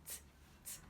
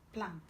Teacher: the second one is t, t, alveolar plosive